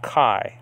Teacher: it's a combination of two vowels coming together blending together making one sound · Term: diphthong